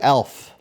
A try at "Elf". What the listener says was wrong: Not Alf. Elf. You said Elf, but it just sounded like Alf. Not Alf the alien, but Elf. Elf.